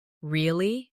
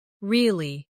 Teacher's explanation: Say, Really? with a rising tone to show surprise. Now say, Really. with a falling tone to show you don't believe someone. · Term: intonation